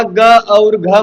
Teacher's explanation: ये तो कंठ वाले हैं, इनका उच्चारण स्थान कंठ से होता है।